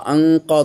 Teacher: ইকফা করলে যেটা শর্ত সেটা হলো নাকে পড়তে হবে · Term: গুন্নাহ